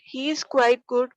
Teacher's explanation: If you hear the words, he is quite good, with a rising tone on good, commonly called comma intonation, you get the impression that the speaker has left something unsaid.